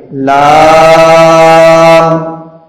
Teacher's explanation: لام کے الف میں آواز ناک میں نہیں جانی چاہیے